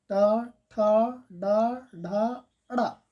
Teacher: आपके जीभ का बिल्कुल नुकीला भाग और ऊपर का मूर्धा भाग थोड़ा टच करता है। ट आप उच्चारण करके देख लीजिए, ट ठ ड ढ अड़ा, इसलिए इनको कहा जाता है मूर्धन्य व्यंजन या ट वर्ग के व्यंजन।